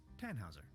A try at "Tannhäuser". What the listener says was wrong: We'd pronounce it Tannhäuser with an umlaut.